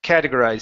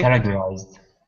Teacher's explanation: the T is going to be like an R sound.